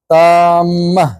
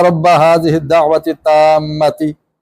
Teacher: اللہم رب هذه الدعوة التامہ، تامہ جب کہنا ہے، وقف کرنا ہے، تو میں نے کل بھی بتایا کہ گول تا پر جب وقف کریں گے تو ہا کی آواز نکالیں